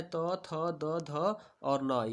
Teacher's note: त वर्ग का उच्चारण स्थान दंत होता है।